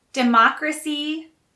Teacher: the stress is on a second syllable for democracy